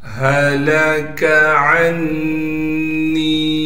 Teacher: لام کو بغیر کھینچے باریک کر کے پڑھنا ہے، کاف کو بھی باریک کر کے پڑھیں گے۔ عین کو نون سے ملا دیں گے۔ · ہا کو صاف کر کے گلے سے نکالیں گے، گلے کا وہ حصہ جو سینے کی جانب ہے۔